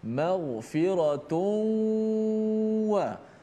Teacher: Memasukkan suara nun mati pada tanwin maghfiratun itu dalam huruf waw. Jadilah dia seperti huruf bertasydid. · Mulut kita masuk dalam waw. Hidung kita lalukan, dia punya bunyikan suara gunnah, suara dengung itu. Panjangkan dengung sikit. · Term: idgham, idgham al gunnah